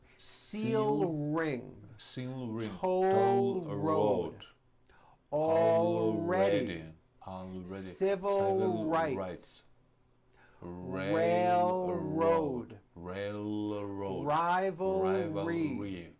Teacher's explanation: These words and phrases have an L sound and an R sound right next to each other. This forces you to make a clear L and then roll it right into a strong R. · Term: LR combinations